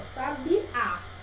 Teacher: a última sílaba é a sílaba tônica, é a mais forte